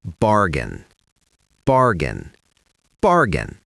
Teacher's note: The AI in the middle is not pronounced like A, it's just a short I sound.